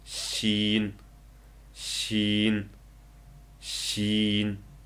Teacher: Talaffuz qilganda til uchining o'ttirisi ustingi tanglayga tegadi. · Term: jaransiz uzuk tovush